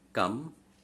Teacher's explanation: So the last syllable, ultimate syllable is cate. The penultimate syllable is ply, and anti-penultimate is come. So the stress is on come.